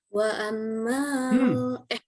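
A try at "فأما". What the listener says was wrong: Masa wa amma. Hei, kenapa wa amma itu huruf apa, Neng?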